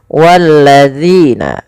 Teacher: Jangan sampai kita membacanya menggantinya dengan huruf zai. · Dan panjangkan dzi sepanjang dua harakat karena ia ada bacaan mad thbi'i. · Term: huruf dal